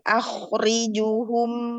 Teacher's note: Wa tebalkan kho-nya karena sebelumnya hurufnya fathah ya. Kalau sebelumnya fathah atau doma itu tebal dia.